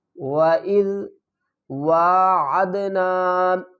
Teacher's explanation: واو کو ایک الف کی مقدار کھینچ کر پڑھیں گے اور عین کو دال سے ملائیں گے۔